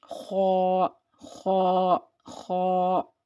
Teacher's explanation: تو جب ہم ان کو ادا کریں گے تو ہمیں کیا کرنا ہے، اپنے ہونٹوں کو تھوڑا سا گول کرنا ہے، زیادہ گول نہیں کرنا ہے ورنہ واو کی ساؤنڈ آ جائے گی۔ تو اپنے ہونٹوں کو تھوڑا سا گول کریں گے، گولائی دیں گے اور منہ میں ہوا بھریں گے، یعنی ان کو ہم منہ بھر کے ادا کریں گے اور اپنی زبان کی جڑ کو پیچھے سے اٹھائیں گے۔ تو یہ حروف موٹے ادا ہوں گے، جیسے خا، خا، خا، ٹھیک ہے۔ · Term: حروف مستعلیہ